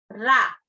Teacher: रा का उच्चारण करते समय जीभ की नोक मसूड़ों के नजदीक आकर कांपती है। रा, जीभ जो है वो मसूड़ों के पास आकर कांपती है, रा, उसको प्रकंपी व्यंजन कहते हैं। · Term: प्रकंपन व्यंजन